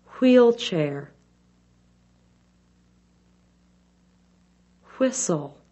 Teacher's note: the wh sound is made by briefly puckering the lips to form a small circle then letting the mouth open a bit the teeth are slightly apart but not shown the tongue is